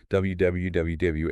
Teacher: The teeth must not touch anything. >> The lips have to be rounded. They make a small tight circle shape like you're about to blow out a candle.